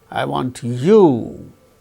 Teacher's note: falling tone is on you that is the main and more important stressed syllable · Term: tonic syllable